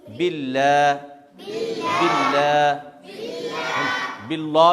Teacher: इस लाम से पहले वाले हर्फ पर अगर ज़ेर आए तो ये लाम क्या होगा? बारीक, बारीक, बिल्ला, बिल्ला, बिल्ला नहीं होगा, गलत हो जाएगा।